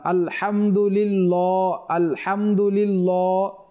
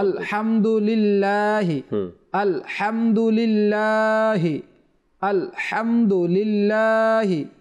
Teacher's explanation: আল্লাহ শব্দের পূর্বে যদি জের থাকে তাহলে ওই লাম বারিক বা চিকন হবে মোটা হবে না